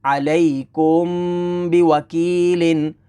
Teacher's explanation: اخفاء شفوی ہوگا، یعنی غنہ کریں گے